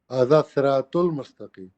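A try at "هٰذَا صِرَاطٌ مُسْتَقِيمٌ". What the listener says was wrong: مستقیم نہیں، مجھے جزم نہیں چاہیے، آخری حرف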